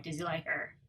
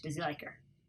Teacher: Does he like you becomes does he like her, or does he like, yeah. The S on does turns to Z sound, and we drop the H and the he. So, does he, no H anymore, does he like her?